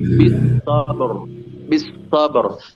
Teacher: ada huruf Qalqalah yaitu ba sehingga ba tidak ditahan tapi langsung memantul